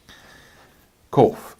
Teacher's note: not kof like a K, but kof like a Q. It's a bit farther back in the throat.